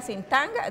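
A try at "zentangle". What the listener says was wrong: No, sin tanga, centangle.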